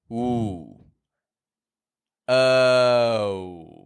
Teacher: O is a moving sound. It's a W glide vowel